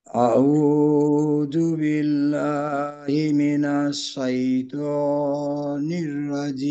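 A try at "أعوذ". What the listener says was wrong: জালের উচ্চারণ কিন্তু আজকেও মাখরাজ থেকে ছুটে গেল। রু, রাজি রু, আউযু। বিষয়টা হলো এই জালের উচ্চারণটা হলো জিহ্বার আগা, সামনের উপরের দুই দাঁতের আগার সঙ্গে লাগাইয়া, তো এই স্পর্শটা নিশ্চিত করতে হবে।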